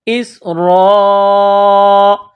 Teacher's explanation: را کے اوپر زبر ہے تو را کو موٹا کرنا ہے